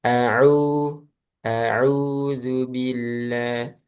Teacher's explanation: Nah, di ain au au jangan masuk hidung. Itu masuk hidung.